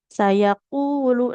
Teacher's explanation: ini qofnya hanya cukup dua harakat saja